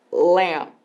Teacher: L, som alveolar, língua pra cima e como em lamp.